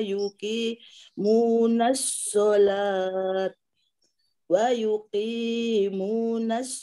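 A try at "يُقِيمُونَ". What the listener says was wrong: yuqimu tidak ada wanya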